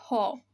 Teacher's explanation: উনি একেবারে কণ্ঠের গোড়া থেকে উৎপন্ন হবে। মানে আমার বাতাসটা হচ্ছে ধ্বনিতার থেকে উৎপন্ন হয়ে আমার কণ্ঠনালী দিয়ে বের হয়ে আসে, সেই জন্য এটাকে বলা হয় কণ্ঠনালীয় ব্যঞ্জন।